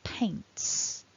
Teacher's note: because of the T, it ends in a s sound